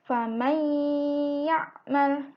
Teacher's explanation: nun matinya hilang, langsung berubah menjadi ya. Faman ya'mal, jadi mim langsung masuk ke ya. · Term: idgham